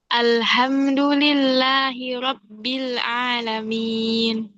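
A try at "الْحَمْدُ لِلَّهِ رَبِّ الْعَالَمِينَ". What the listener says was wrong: Oke, kayaknya perlu belajar lagi di huruf lamnya nih. Lam. Alhamdulillah.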